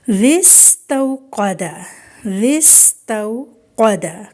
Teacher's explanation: زال نرمی سے پڑھنا ہے اور آگے سین وہ سیٹی کی ساؤنڈ ہے، اس کو سختی سے پڑھیں گے۔